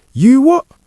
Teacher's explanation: Sometimes with a glottal stop at the end.